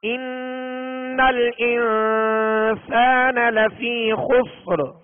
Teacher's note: تو اب یہ کہ حروف اخفا میں سے، لہذا ایک الف کی مقدار میں غنہ کریں گے اخفا کا، یعنی ناک میں آواز کو ایک الف کی مقدار میں چھپائیں گے